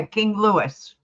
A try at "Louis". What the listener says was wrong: Louie the S is silent